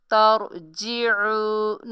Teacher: आइन को हलक से निकालिए, आइन वाव पेश उ, तरजिऊ नून ज़बर ना, तरजिऊना।